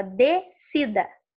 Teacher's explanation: Quando eu falo descida, eu não falo o som do S.